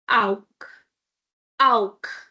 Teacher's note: Because before ch we have au or u, so kh.